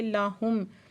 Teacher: لَہُم میم ساکن اظہاری شفوی ہے۔